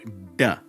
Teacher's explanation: notice how the voice box vibrates a little bit